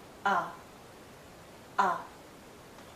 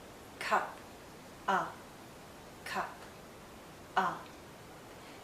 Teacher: it's a very short sound and also a very relaxed sound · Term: central vowel sounds